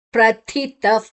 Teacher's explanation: ತಾದ ನಂತರ ವಿಸರ್ಗದ ಉಚ್ಚಾರಣೆ ಫ್, ಮುಂದಿನ ಅಕ್ಷರ ಪ ಇದೆ